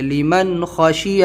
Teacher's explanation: یہاں پر نون ساکن ہے، نون ساکن کے بعد خا ہے، خا حلقی لیٹر ہے تو ہم یہاں پہ نون کی آواز کو ظاہر کر کے لیمن خشیہ جلد پڑھیں گے